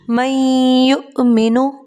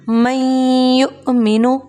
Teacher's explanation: 1 second آواز کو ناک میں روک کر رکھنا ہے، اسے کہا جاتا ہے غنہ